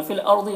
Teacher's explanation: फिल अर्दी रॉ को पुर पढ़ेंगे, गौद को पुर पढ़ेंगे